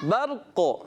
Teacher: را بھی پر رکھنا ہے, قاف بھی پر کرنا ہے, اور قلقلہ بھی لوڈ کرائے